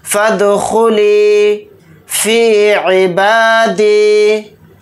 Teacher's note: फ़ा को दाल साकिन के साथ मिलाकर पढ़ेंगे। दाल के ऊपर जज़म है तो इसके अंदर क़लक़ला करके पढ़ेंगे